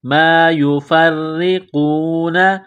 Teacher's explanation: گے، منہما ما یفرقون، فا کو را کے ساتھ ملانا ہے، را کے نیچے زیر ہے تو را کو باریک کرنا ہے، قاف کو موٹا کرنا ہے